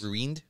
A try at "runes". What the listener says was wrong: No, not... There's no I in there. It's runes.